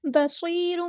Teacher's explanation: صاد ہمارا ہیوی پورا ادا کریں گے، یا ساکن سے پہلے زیر آئیے تو مد اصلی ہوگی، یہاں پر صاد کو سیٹی بھی آنی چاہیے.